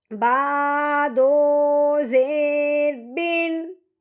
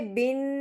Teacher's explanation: اب تنوین کے بعد آگے جو حمزہ ہے یہ حروف ہلکی میں سے ہے، اب ہم نے تنوین پہ غنہ نہیں کرنا، بغیر غنے کے اظہار کے ساتھ پڑھنا ہے۔